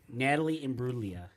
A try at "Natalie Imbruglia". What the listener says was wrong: No, wrong. it's Natalie Imbruglia. You missed a syllable.